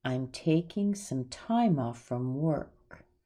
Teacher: if you hear time being stressed the most, you're right.